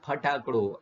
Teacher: જ્યારે ગુજરાતીમાં ફ બોલો ત્યારે બે હોઠ ભેગા થાય અને એટલે ગુજરાતી ફ્લેબીયલ સાઉન્ડ છે ફટાકડો આ રીતે બોલી જુઓ